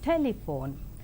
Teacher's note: in the 3-syllable word telephone, the first syllable is more prominent